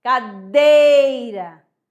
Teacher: Aí que o ele tá sendo vogal e o I está sendo semivogal. Então, o E é forte e o I é fraco. Aí você vai maior intensidade, menor intensidade.